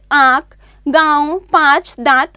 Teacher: इसे अनुनासिक कहते हैं। इसे नाक और गले दोनों से बोला जाता है, जैसे आंख, गांव, पांच, दांत आदि।